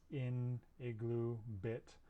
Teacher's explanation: this sound is a high, front, unrounded vowel, and this is the lax version of the previous one.